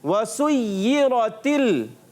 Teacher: را پر زبر آنے کی وجہ سے را کو پر پڑھتے ہیں